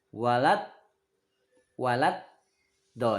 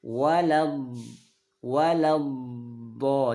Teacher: bunyi do ini ada sifat istitolah. Maka ketika dia tasjid ada bunyi memanjang. Jangan sampai bunyinya mati.